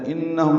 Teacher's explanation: بعد حمزہ آنے کی وجہ سے مد منفصل ہے، انہم میں نون مشدد پہ غنہ ہے